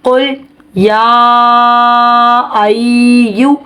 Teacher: حرف مدہ کے بعد حمزہ دوسرے کلمے میں، تو یہاں پر مدہ منفصل ہو رہی ہے جس کی مقدار 2.5 الف کے برابر ہے